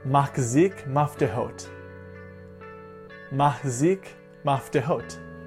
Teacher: Usually what we're dealing with is either too much ch, which sounds unnatural, or not enough ch, which can be confused with other letters like hey or a hard Kaf or Kuf sound